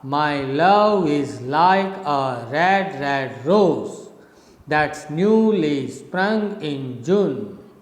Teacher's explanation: so you can say it's a rising rhythm from down you go up